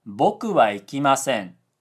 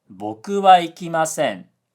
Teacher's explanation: In this video, I've been saying boku with a high-low pitch pattern, but a lot of people in natural conversation say boku with a low-high pitch pattern.